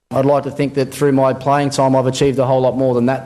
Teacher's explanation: the Australian habit of ending a sentence with the rising inflection · the rising tone makes a statement sound like a query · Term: high rising terminal